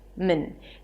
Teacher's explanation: So technically there is no vowel between the M and the N. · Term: reduced vowel